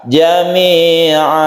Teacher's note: Gantinya tanwin, di sini ada tanwin fathah atau fathat yang kita ganti menjadi mad atau panjang, sehingga tidak an tapi a. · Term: mad iwad